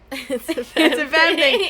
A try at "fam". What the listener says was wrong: It sounds like fem, but it's fam.